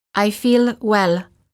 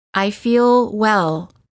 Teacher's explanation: notice how the L is prolonged by keeping the tongue up longer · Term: American L